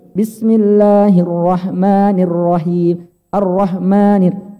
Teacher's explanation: Naik sebentar langsung turun. Naik sedikit cuma turun.